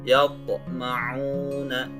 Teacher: Jadi ada pantulan bunyi huruf to yang sukun.